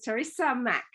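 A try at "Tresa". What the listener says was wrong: Not Teresa. You put an E in Teresa.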